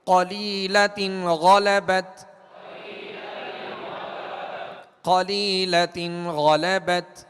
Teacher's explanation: جڑ زبان تالو کی طرف بلند کریں گے تو یہ حروف مستعلیہ خود بخود پر ہوں گے یعنی موٹے پڑھے جائیں گے. اگر جڑ زبان تالو سے نیچے رہے گی تو یہ حروف باریک ہوں گے.